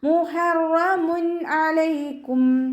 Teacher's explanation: തെൻവീനിന് ശേഷം ഹൽക്കിൽ നിന്നും പുറപ്പെടുന്ന ഏതൊരക്ഷരം വന്നാലും നമ്മൾ തെൻവീനിലുള്ള നൂനിൻ്റെ സൗണ്ടിനെ വ്യക്തമാക്കി മണിക്കാതെ ഉച്ചരിക്കുക. മുഹറമുൻ, അവിടെ നൂനിൻ്റെ സൗണ്ടിനെ വ്യക്തമായിട്ട് കേൾപ്പിക്കണം. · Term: ഇവഹാർ